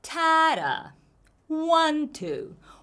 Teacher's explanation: when the first one is higher in Pitch that's our emphasis